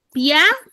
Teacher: La i es una vocal cerrada y la a es una vocal abierta. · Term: diptongo